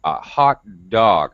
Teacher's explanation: hot's an important word it's an adjective so it gets stressed